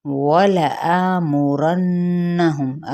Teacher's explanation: آ پہ الف مدہ کا قائم مقام ہے، ایک الف کے برابر کھینچیں گے، نون پہ غنہ، میم پہ اظہار۔